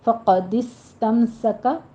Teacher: فقد استمسک، قاف کو پر پڑھیں گے، دس میں سین کے اوپر حمز ہوگا، سیٹی کی آواز کے ساتھ ادا کریں گے اس کو